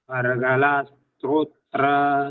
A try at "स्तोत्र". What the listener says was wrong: स्तोत्र नहीं है, स्तोत्र है, स्तोत्र। त्रो नहीं है जी, तो है।